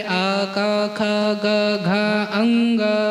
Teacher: अ का उच्चारण स्थान, क वर्ग का उच्चारण स्थान कंठ से होता है